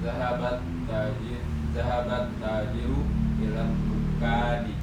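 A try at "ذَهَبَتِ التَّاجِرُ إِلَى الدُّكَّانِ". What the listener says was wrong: Masya Allah, bersih ya. Jadi benar semua harokatnya.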